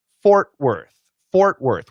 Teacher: Fort is actually what we call a long O plus R, and Worth is what I like to call the schwa R.